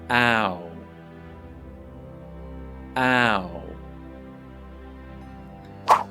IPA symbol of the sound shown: aʊ